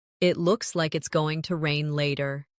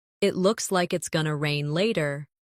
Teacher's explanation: In connected speech, going to becomes gonna.